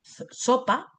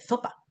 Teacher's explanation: es andaluza y además de sesear, que es un rasgo de parte de Andalucía, ella cecea. Es decir, ella no dice sopa, dice zopa, que es otro fenómeno fonético, punto, no tiene nada más que ver.